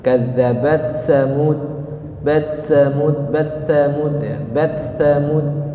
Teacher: Di sini harus dibaca izhar, jelas. Kadzabat harus dikeluarkan dulu hams pada huruf ta, kemudian baru pindah ke huruf sa. Ya, tidak bisa diidghamkan.